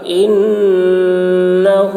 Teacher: نون مشدد غنہ ہوگا